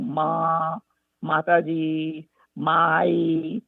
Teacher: some of the first sounds that they produce is what's called a bilabial sound with an open vowel. And that is where the lips make, the lips come together and they make kind of an ah sound.